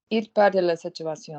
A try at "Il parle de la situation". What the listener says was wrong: No, it's il parle. Stop doing consonants. Stop literally using your lips. Give me more chest pressure. Be more dynamic in the chest. Il parle de la situation.